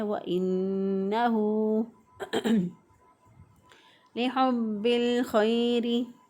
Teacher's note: ہا کو وسط حلق سے ادا کیا